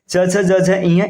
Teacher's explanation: च छ जझ य इसका उच्चारण स्थान तालू है